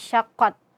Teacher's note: syiddah yaitu tertahannya suara. Nah, jadi kita tahan dulu suara kita saat mengucapkan huruf ta yang sukun, syaqqat. Nah, dengan menempelkan ujung lidah kita kepada pangkal gigi seri atas, syaqqat. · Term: sifat syiddah